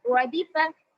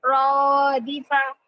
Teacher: مجھول آواز سے بچاتے ہوئے معروف آواز سے جلدی پڑھیں گے زیر کو، یعنی کسرہ کو